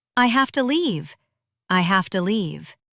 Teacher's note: Notice the V becomes an F sound here.